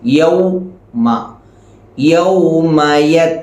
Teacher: വാവിന്റെ മഹജ് നേരത്തെ പറഞ്ഞു ചുണ്ടുകൾ മുഴുവനും മുന്നിലേക്ക് കൂർപ്പിച്ചു വേണം പറയാൻ